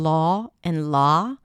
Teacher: In some dialects in the US, you don't hear a distinction. Both of them are merged to the A sound.